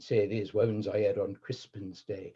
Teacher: that R growl actually occurs even more in OP than it does in the West Country